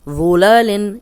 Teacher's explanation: ظلالن، اس میں صرف ذو کی پریکٹس کریں، موٹا بھی ہے نرم بھی ہے، سیٹی کی آواز نہیں آئے گی.